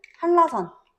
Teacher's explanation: 앞말에 니은이 리을로 바뀌는 경우는 한라산. 앞에 오는 니은이 리을로 바뀌어.